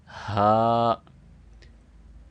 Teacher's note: یہاں پہ آپ دیکھ سکتے ہیں کہ ہا ہے، اور ہا کو 2 سیکنڈ لمبا کرنا ہے، اوپر کھڑی زبر ہے، اور ہا کی ادائیگی بھی صحیح کرنی ہے۔ گلے کے نیچے والے حصے سے جو سینہ کی طرف ہے وہاں سے اس کو پروناؤنس کرنا ہے